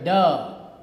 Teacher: your tongue touches your front part of the palette